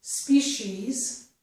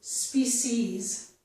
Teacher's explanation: This word has two pronunciations. It can be pronounced as species with the sh sound, and also as species with the s sound